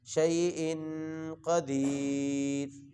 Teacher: شیء پر غنہ کریں گے، قاف کو موٹا کر کے پڑھیں گے